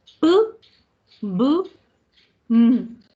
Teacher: Junté los labios. P, B, M. Por eso se llaman bilabiales. Ambos labios se juntan.